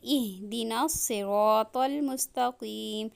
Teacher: جب ہم ہا پڑھیں گے تو حلق کے نچلے حصے میں وائبریشن ہوتی ہے